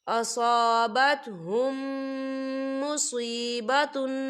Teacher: تو ہم غنہ بھی کریں گے اور میم ساکن کو میم ساکن کے ساتھ ملا کر پڑھیں گے۔ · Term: ادغام شفوی